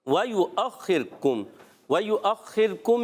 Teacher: واو کی ادائیگی ہونٹوں کی گولائی سے، حرکات واو پر زبر ہے، پیش ہے، یا پر پیش ہے، پھر حمزہ ہے، واو کے اوپر حمزہ اور اس پر زبر ہے، تو حرکات کو بغیر کھینچے بغیر جھٹکا دیے معروف ادا کریں گے۔